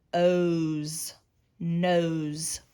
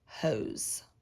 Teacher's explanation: even though there's an s it can make that z sound